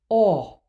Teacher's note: open O, aw, feels like it is meant to be short. It is difficult to sustain this vowel for any length of time. When a word with open O is set on a long note, it is easy for this vowel to distort and become dark ah by accident. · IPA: [ ɔ ]